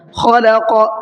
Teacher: خلق، قاف کو منہ بھر کے پڑھنا ہے، لکم کے کاف کو باریک پڑھنا ہے، دونوں ایک ساتھ آ رہے ہیں، تھوڑا پڑھنے میں دشواری ہوگی لیکن آپ پریکٹس کریں گے، تھوڑے سے پریکٹس کے بعد میں انشاءاللہ یہ دشواری آپ کی دور ہو جائے گی۔